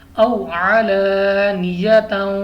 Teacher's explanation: اب یہاں پہ ہمارے پاس الف سے پہلے زبر آ گئی، الف مدہ دو الف تک کھینچ کر پڑھیں گے، اور اس سے پیچھے ہمارے پاس واو ساکن سے پہلے زبر ہے تو واو لین ہوگا، ہم نے بغیر کھینچے پڑھنا ہے۔